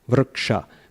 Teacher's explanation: Short ri, but it's followed by double consonant, K and sha. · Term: guru